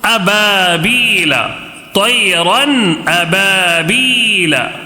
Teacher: نون کی آواز ظاہر کرنا ہے اور بغیر غنہ کے پڑھنا ہے